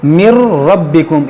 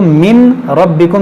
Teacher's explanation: यहाँ पर देखें नून साकिन के बाद रा है, यहाँ पर इदगाम करेंगे। मिर रब्बिकुम, इसको मिन रब्बिकुम नहीं पढ़ेंगे, मीम नून रा ज़ेर मिर, रा बा ज़बर रब, मिर रब, बा ज़ेर बी रब्बी, काफ मीम पेश कुम रब्बिकुम, मिर रब्बिकुम अज़ीम।